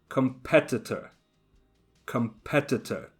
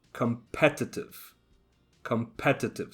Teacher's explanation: the stress is on the second syllable competitor and competitive